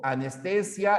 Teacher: la A de anestesia no tiene fuerza de voz